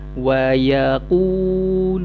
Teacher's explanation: bunyi awak panjangkan, datang daripada rongga mulut al-jawfu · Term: bacaan panjang huruf waw